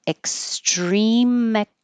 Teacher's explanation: you won't hear the K in extreme.